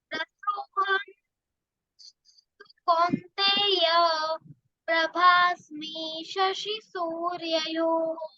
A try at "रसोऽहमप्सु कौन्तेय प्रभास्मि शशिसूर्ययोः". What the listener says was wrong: सूर्ययोः, ह का साउंड करना है। जिधर दो डाउट है, दो डॉट है, मतलब विसर्ग है, उधर हमेशा ह का साउंड करना है।